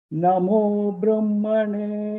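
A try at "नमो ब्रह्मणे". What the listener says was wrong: Namo. That's also going down. Namo Brahmane.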